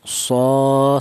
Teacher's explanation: Di mana huruf shad ini berharokat berdiri, ini menunjukkan bahwa huruf tersebut dibaca panjang yaitu satu alif atau dua harokat atau dua ketukan